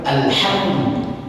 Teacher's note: alhamdu, ham itu di tengah tenggorokan sini